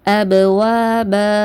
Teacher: அலிஃப் மத்தாவை பயன்படுத்தி 2 ஹரக்கத்து நீட்டி நிப்பாட்டுவோம். அபுவா பன்னு இருக்கிறத அபுவா பான்னு நம்ம நிப்பாட்டுவோம்.